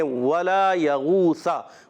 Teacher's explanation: یا پر زبر، غین واو پیش غو، واو مدہ بھی ہے، غین حروف مصالیہ میں سے موٹا بھی کرنا ہے، حلق کے اوپر والے حصے سے غین ادا ہوتا ہے ، سا پر زبر ہے بغیر کھینچے ادا کریں گے، ولا